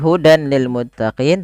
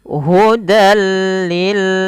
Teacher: yaitu caranya adalah tanwinnya masuk ke lam bukan lagi Hudan lilutin tapi hudilutin nah seperti itu baik lanjut · tanwin sampai bertemu dengan huruf apa huruf lam di sini maka masukkan saja langsung tanpa ditahan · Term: idgham bilaghunah, idgham bila gunnah